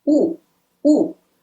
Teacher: Yes, it's Wu, not Yu. Wu with the falling tone.